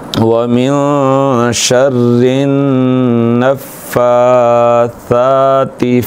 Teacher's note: یہ نون مشدد آ گیا ہے، یہاں پہ غنہ ہوگا، نون مشدد میں غنہ ہوگا۔ آپ کو بتا چکے ہیں پہلے سبق میں نون مشدد اور میم مشدد میں غنہ ہوتا ہے.